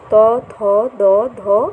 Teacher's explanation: অগ্রজিহাটা দাঁতকে স্পর্শ করছে এবং শ্বাসবায়ুকে আটকে দিচ্ছে বলেই একে দন্ত ব্যঞ্জন বলে।